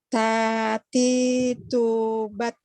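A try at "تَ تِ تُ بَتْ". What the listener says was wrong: Ah, S-nya terlalu banyak Bu. Sedikit aja. iya, S-nya jangan banyak-banyak.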